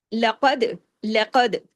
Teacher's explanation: قاف ہیوی، دال پہ کلکلا ہوگا. قاف، لام باریک، قاف ہیوی موٹے حروف میں سے ہے، دال پہ کلکلا.